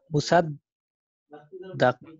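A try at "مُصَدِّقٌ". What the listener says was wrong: Why da? Di. Musaddiqun.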